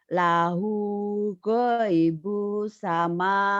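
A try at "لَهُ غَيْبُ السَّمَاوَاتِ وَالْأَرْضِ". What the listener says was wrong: Goibus. Lahu. Goibus. Kurang nyamber Bu.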